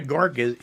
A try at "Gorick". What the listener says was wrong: I think you put another syllable in there somewhere.